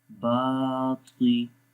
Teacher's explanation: با کو لمبا کریں گے، یہاں پر الف ہے اور الف زبر کے بعد آ رہا ہے، اس لیے اس کو لمبا کریں گے